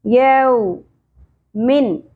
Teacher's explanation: واو ساکن سے پہلے زبر، حرف لین نرمی سے ہوگا ، یو نہیں پڑھنا، یو ایک مجہول غلطی ہے، یو من،